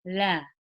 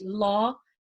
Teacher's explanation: there's a slight smile when I'm pronouncing the lamb in its in its light form but when I'm saying it in its heavy form it's more of a rounded face